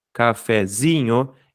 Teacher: Mas a tônica mesmo é o zi.